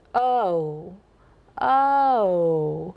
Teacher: So we say O. Whereas in a general American accent or other accents in the United States, the O is a diphthong. It has two sounds. So it goes O, O.